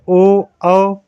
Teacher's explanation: ओ औ ये दोनों कंठोष्ठ वर्ण होते हैं